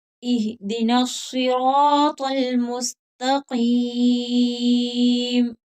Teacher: یہاں صاد حروف مستعلیہ ہے تو اس کو موٹا کر کے پڑھیں گے